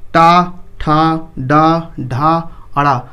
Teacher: जैसे बोलते हैं टा, टा बोलिएगा तो ऊपर जाके जीभ मुड़ के लड़ता है। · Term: मूर्धन्य